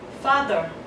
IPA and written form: ˈfɑːðə (father)